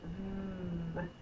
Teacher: The first sound is V. I'm biting my bottom lip and the voice is on.